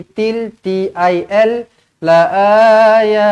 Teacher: jumpa dengan lam sabdu tak payah dengung masuk sahaja di sini til t i l latilq sekali lagi liqau sama macam atas